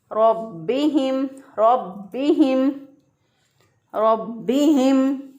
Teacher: अब यहाँ पर रा के ऊपर चूँकि ज़बर है इसलिए इसको मोटा पढ़ेंगे। बा के ऊपर शद है तो शद वाले हरफ को हम मज़बूती और क़ुव्वत के साथ पढ़ते हैं। तो बा को मज़बूती और क़ुव्वत से पढ़ा, रब्बिहिम, रब्बिहिम, रब्बिहिम।